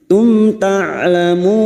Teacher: Mim sukun bertemu tak idhar safawi, mim sukun dibaca jelas tanpa mendengung. Tum ta'lamun, ta huruf ain sukun, ta'lamun.